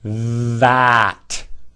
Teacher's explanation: tongue pushed out beyond the front teeth, under the teeth, vibrating. Gotta push the tongue out.